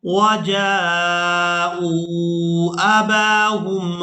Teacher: حمزہ کو واو مدہ کے ساتھ ملانا ہے تو کھینچ کر ادا کرنا ہے